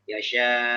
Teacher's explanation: yang naber itu bukan matnya, hamzahnya